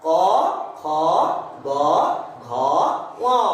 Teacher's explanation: কণ্ঠ মানে দেখ, এই কণ্ঠনালী থেকে সরাসরি উচ্চারণ হচ্ছে এই বর্ণগুলো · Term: কণ্ঠধ্বনি